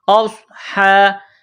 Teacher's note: اولئک اصحاب النار، حمزہ کو صاد کے ساتھ پلس کرنا ہے، صاد کو موٹا کرنا ہے، صاد میں سیٹی کی آواز پیدا کرنی ہے ، حمزہ صاد زبر اوس، ہا کڑا زبر ہا، اوس ہا،